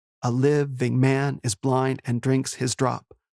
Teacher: pairs of unstressed and stressed syllables